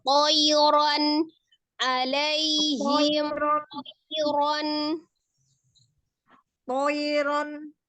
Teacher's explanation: Tonya tipis, tebalkan ya